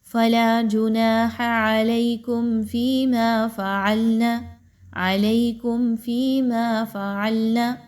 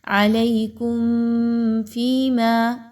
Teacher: یہاں پر اب میم کی ادائیگی بڑی کوئکلی رکھی جائے گی وداؤٹ غنہ